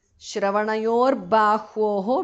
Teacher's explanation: visarga changes to repha